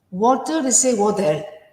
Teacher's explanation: when they pronounce the letter T in the middle of a word, it's like more D.